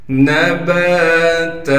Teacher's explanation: نون کو بغیر کھینچے پڑھیں گے، با کے بعد الف ہونے کی وجہ سے با کو ایک الف کے مقدار کھینچیں گے